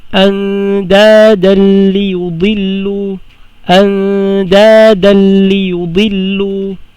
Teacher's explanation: Didiretso kagad sa lam. Walang gunna. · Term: idgham bila gunna